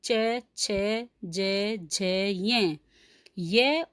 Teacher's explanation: तो इन वर्णों का उच्चारण स्थान तालु होता है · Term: तालव्य